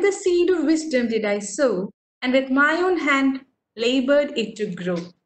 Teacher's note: the first syllable would be a weak one and the second syllable would be a stronger one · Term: iambic pentameter